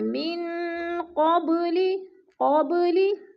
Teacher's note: با ساکن ہے اور حروف قلقلہ میں سے ہے تو ادھر قلقلہ کریں گے